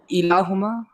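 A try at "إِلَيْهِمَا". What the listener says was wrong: الیہما. یہ الہ نہیں ہوگا، آپ دیکھیں نا کیا بن جائے گا؟ الہ پلس یا. الہ پلس یا ہے نا واحد متکلم کا.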